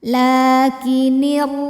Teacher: huruf ra dipanjangkan, ditebalkan ya, pangkal lidah dinaikkan. Lakinirra, ra madnya mad tabi'i muqaddar. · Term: tafkhim